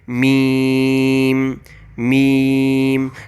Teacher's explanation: ویٹ place چونکہ تھا با کے لیے، اور جو ابھی ڈرائی پلیس ہے وہ ہوگا میم کا آرٹیکولیشن پوائنٹ۔ میم کو پروناؤنس کرتے وقت ہمارے ہونٹ آپس میں ملیں گے اور تھوڑی سی آواز یہاں سے ناک کی جانب جائے گی